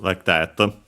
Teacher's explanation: There's the matter, of course, of how we write the sound fa, because we only have hu, actually a bilabial fricative in Japanese, but it's quite similar to the labiodental fricative f in English, so it becomes that.